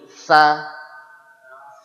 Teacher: Ilmunya ujung lidah ketemu ujung gigi seri atas. Ilmunya ujung ketemu ujung, prakteknya masih bunyi di dinding, masih bunyi di gusi. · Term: huruf es